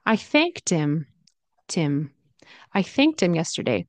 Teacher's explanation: Sound is often dropped in fast speech. So him can turn into im.